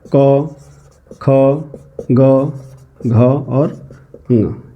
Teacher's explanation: कंठ्य वर्ण कहे जाते हैं। कंठ से बोले जाने वाले वर्ण कहे जाते हैं।